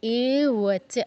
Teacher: তারপর অক্লে দিও শোষিয়া এ ওয়াচ, এ ওয়াচ, এতে দীর্ঘ করতে হবে, এ ওয়াচ। চতে দীর্ঘ করা যাবে না, চ বলেই ছেড়ে দিতে হবে।